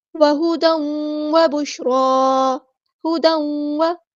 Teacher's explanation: ادغام مع الغنہ، ایک الف کے برابر رکیں گے ادغام کرتے ہوئے